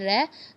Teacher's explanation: लुंठित स्वर का मतलब होता है, जैसे कि जब उसका उच्चारण होता है तो जो जीभ होती है वो एक तरह से, जब उच्चारित होता है रै, तो जीभ जो होती है वो हल्की सी लुढ़क सी जाती है। तो इसी वजह से इसका नाम लुंठित वर्ण रख दिया।